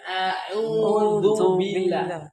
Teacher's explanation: U-nya panjang 2 harokat, du-nya tidak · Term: Mat tabi'i